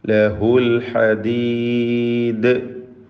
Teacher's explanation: ദാലിൽ ഖൽഖല കുബ്ര നൽകി വഖഫ് ചെയ്യണം.